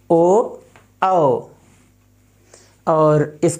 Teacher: उच्चारण स्थान है मित्रों कंठ ओष्ठ